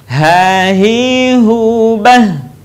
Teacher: Huruf H sekali lagi keluar dari tenggorokan terjauh.